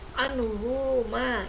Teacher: ada hak domir bertemu dengan huruf ma. Maka dibacanya tidak panjang ya, pendek ya. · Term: matsilah qasira